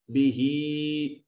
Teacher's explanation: हा के नीचे या अलमदिया असगीरा है, एक अलिफ के बराबर लंबा करेंगे